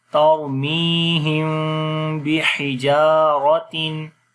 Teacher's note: را کو موٹا پڑھیں گے، را کے اوپر جزم ہے اور اس سے پہلے زبر ہے · پہلے زبر ہے، اس وجہ سے را کو موٹا پڑھیں گے، می کو لمبا کریں گے یا مدہ کی وجہ سے